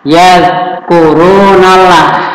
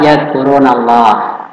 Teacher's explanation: lamul jalalah ada fathah. Disebut apa anak-anak? Disebut tafkhim. Artinya apa? Tebal. Jadi tidak boleh dibaca yazkurunallah, tapi tebal.